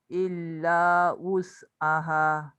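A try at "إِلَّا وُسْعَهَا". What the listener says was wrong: Tak berapa tepat. Dia macam bunyi hamzah. Tolak W. W-U. Wu. Illa wus.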